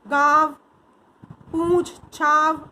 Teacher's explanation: इसका उच्चारण नाक और मुंह दोनों से होता है